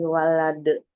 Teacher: Mainnya matobi alif, sebelumnya fathah. Walade, dalnya ini termasuk huruf qalqalah, dibaca mantul, tapi karena dia wakof jadi disebut qalqalah kubro